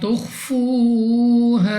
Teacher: خا مستعلیہ میں سے ہے، پر یعنی موٹا پڑھیں گے۔ واو ساکن سے پہلے پیش پاؤ مدہ 2 سیکنڈ تک کھینچ کے پڑھیں گے۔